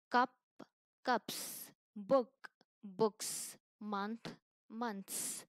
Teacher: s sound like a hissing of a snake it's voiceless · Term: voiceless sound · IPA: /s/